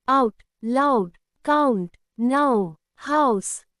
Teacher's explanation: This sound starts as A and ends as O, both together make OW. It is a diphthong sound, meaning two vowel sounds glide together.